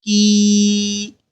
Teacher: یہاں بھی یا مدہ ہے، تو یا مدہ کو ہم ایک الف کے برابر کھینچ کر پڑھیں گے